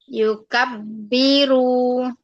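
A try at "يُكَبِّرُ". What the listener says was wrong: Iya, belakang jangan panjang-panjang. Kabbaro. Yukabbiru gitu. Yukabbiru.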